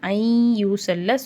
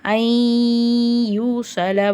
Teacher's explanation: சுக்குன் பெற்ற நூனுக்கு பின்னாடி யா வருது. இங்கே இதுகாமுடைய சட்டம் வருதுனால குன்னா செஞ்சு ஓதணும்.